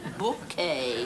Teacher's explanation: the accent on the second syllable